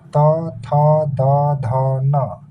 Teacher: फिर तवर्ग त थ द ध न। फिर ल है और दंत स है। इनका उच्चारण कहाँ से होता है? दांत से होता है। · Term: दंत्य वर्ण